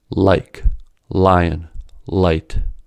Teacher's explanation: For the light L, the tongue is brought near the alveolar ridge, forcing the air around the tongue toward the sides, lateral, of the mouth before being allowed to exit.